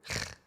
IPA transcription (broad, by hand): ʁ